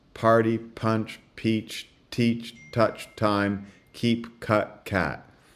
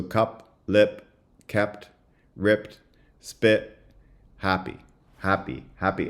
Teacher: touch time keep cut cat and if you're wearing a mask you should be able to feel puffs of air when you say party punch in your mask or if you put your hand up party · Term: aspirated stops